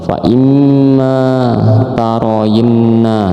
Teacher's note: ini nun musayadah harus ditekan juga, harus didengungkan juga.